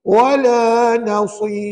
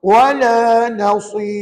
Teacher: Sad itu tebal. Yang nipisnya ra.